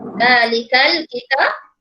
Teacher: Kita bunyi zal, hujung lidah kita berada di antara gigi atas dan bawah.